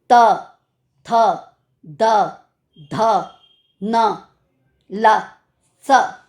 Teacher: जीभ जो है वो टीथ को टच करती है। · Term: दंत